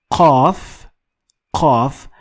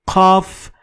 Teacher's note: qaf is a little bit backward in your throat. Kaf is a little bit in front. So you need to go a little back in your throat and you will find the sound.